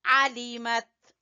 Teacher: تا کے اوپر قلقلہ بالکل نہیں کرنا، اگر ہم پڑھیں گے عَلِمَتْ تو قلقلہ ہو جائے گا۔